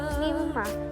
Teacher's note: Mimma, ini disebut guna atau bajibul guna karena ada huruf mim di tasdid, membacanya harus didengungkan kira-kira 2-3 harokat. Dalam membaca hukum guna harus konsisten atau tetap bunyi dengungnya.